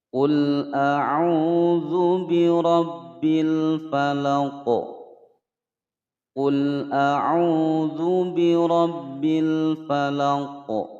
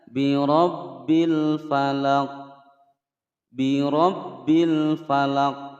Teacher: Huruf qaf ini disukunkan karena berwaqaf. Kemudian kita baca memantul ya, dipantulkan bacanya. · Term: qalqalah kubra